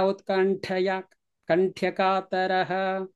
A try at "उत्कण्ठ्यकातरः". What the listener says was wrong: Kanthya, because utkanthya, not kanthaya.